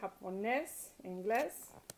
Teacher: It ends in a vowel N or S, and usually it would be stressed on the next to last syllable, but inglés is stressed on the last syllable, so that's why you have to write a written accent, because it breaks rule 1.